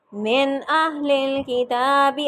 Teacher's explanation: اب یہاں میں نے اظہار کیا ہے من پہ کیونکہ حمزہ آ گیا آگے